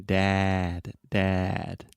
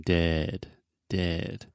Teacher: when you say Dad your mouth is really really open it kind of looks like a square shape and then dead your mouth is much more closed